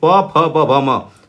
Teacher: हमारे दोनों ओठ सटते हैं, इसलिए इसको ओष्ठ वर्ण के नाम से जानते हैं